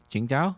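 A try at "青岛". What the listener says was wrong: Qingdao. You'd like to pronounce it Tsingtao, but it's Qingdao.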